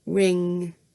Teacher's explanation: So your dominant hand goes back to g, but this time your other hand goes to do an n, because it's a nasal sound. So it's got your tongue in that position for g, but it's coming out of your nose